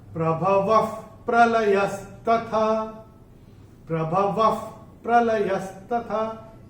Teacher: तो विसर्ग का उच्चारण होता है फ। जैसे फूंक मारते हैं ना, वैसे फ।